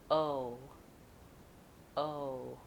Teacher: move from your o to a more closed jaw and more rounded lips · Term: vowel o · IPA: /oʊ/